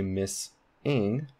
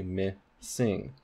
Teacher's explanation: you can hear this S in the onset of the second syllable